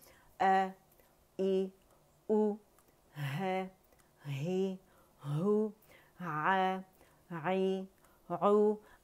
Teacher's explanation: اقص الحلق سے ادا کرنا ہے۔